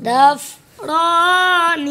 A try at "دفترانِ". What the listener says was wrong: ان تا بھی جو چھوڑ دیتی ہے. دفتر، دفترانی، دفترینی.